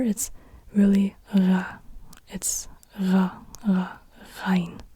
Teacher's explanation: It's a throat R, not a rolled R, but a throat R.